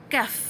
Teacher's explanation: pangkal lidah menyentuh bahagian lelangit belakang. Okey, selepas huruf qaf, ke depan sedikit tu sebutan bagi huruf kaf.